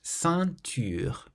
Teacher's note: So the nasal sound in this word is in the middle because the N is followed by a consonant.